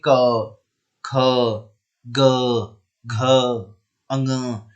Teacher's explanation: क और ख के उच्चारण में आपको कंपन महसूस नहीं होगा, या फिर ऐसा हो सकता है कि आपको कंपन बिल्कुल ना के बराबर महसूस हो रहा हो, हल्का बहुत कंपन आपको लगे।